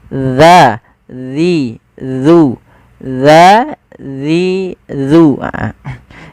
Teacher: Bagaimana melafalkan huruf zal yang tepat? Yaitu ujung lidah kita menempelkan dengan gigi seri atas kita